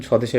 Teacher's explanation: আমরা কিন্তু বফলাটা উচ্চারণ করিনি